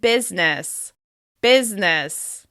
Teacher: Over time, we've completely dropped that i sound in the middle.